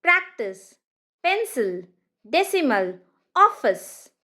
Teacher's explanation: The last sound is going to be a schwa sound. It's nothing but the weaker sound and it always appears only in an unstressed syllable.